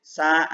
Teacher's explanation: Dia punya sifat hamas, udara mengalir ya. Rokhwah, dari suaranya dialirkan ke makhrajnya. · istifal, lidahnya rileks, suaranya tipis, dan dia punya sifat sofir seperti son. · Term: sin